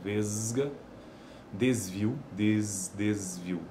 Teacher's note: Apesar de que na ortografia um s mas olha ele já vibra